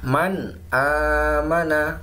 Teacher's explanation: jadi nun sukun nya terbaca dengan jelas ya di tenggorokan · Bacaan dibaca izhar halqi atau dibaca jelas di tenggorokan, yaitu apabila ada nun sukun atau tanwin bertemu dengan salah satu dari huruf 6, yaitu hamzah, ha, kha, ain, ghain, dan ha. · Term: idzhar halqi